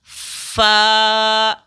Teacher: یعنی اوپر کے دانت کو نیچے کے ہونٹ سے ملا کر ادا کریں گے